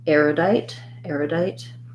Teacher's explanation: we have first syllable stress so the letters er say the air diphthong in this word